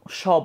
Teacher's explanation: আপনার দুইটা বাক প্রত্যঙ্গ খুব কাছাকাছি আসতেছে, এর মাঝখানে যখন বায়ু নিঃসৃত হয় সেটার ঘর্ষণ বাতাসে হচ্ছে, দেন সেটা উচ্চারিত হচ্ছে। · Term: উষ্ম ব্যঞ্জন